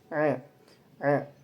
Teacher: Huruf ain itu termasuk makhrajul huruf halqi dari tenggorokan. Kemudian tarikatul hurufnya dia termasuk ikhtiaki.